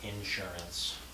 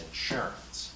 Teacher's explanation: It's insurance. Second syllable, not first syllable.